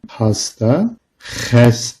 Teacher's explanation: Gırtlaktan çıkan h sesine göre oldukça sert. H sesi hiçbir engele takılmadan çıkar ve bu ses boğazın üst kısmında titreşir.